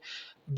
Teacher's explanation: बा दोनों होठों के आपस में मिलने से अदा होता है तो ये दोनों होट बा का मखर है यानी बा के